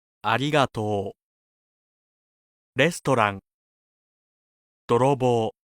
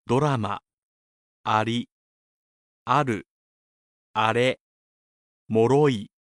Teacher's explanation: To make the Japanese R sound, place the tip of your tongue on your alveolar ridge and let it flap quickly forward